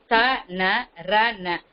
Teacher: ந என்பதை முதல் எழுத்து தாவுக்கு அப்புறம் இருக்கிற நாம வந்து நுனி நாக்குல உச்சரிக்கணும் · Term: தன்னகரம்